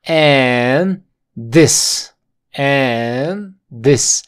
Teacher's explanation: aquí no se pronuncia la d porque está entre dos consonantes